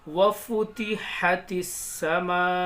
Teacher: تا کو سین میں ملائیں گے. یہ الف اور لام سائلنٹ رہے گا